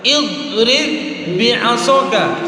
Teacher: huruf ba yang pertama kita masukkan ke dalam ba yang kedua, maka cara bacanya ringan aja.